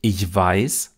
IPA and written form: ɪʝˈvaɪ̯s (ich weiß)